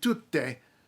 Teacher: it's not normal in English to hold a consonant longer